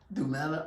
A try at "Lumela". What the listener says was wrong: Lumela. So instead of do, you say lu. See how similar they are?